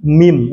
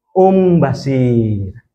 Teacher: seolah-olah nun mati ini kita baca dengan mim bukan sama nun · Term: iqlab